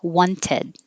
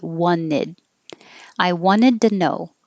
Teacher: you can say it perfectly, wanted, but you can also get rid of the T and say wanted.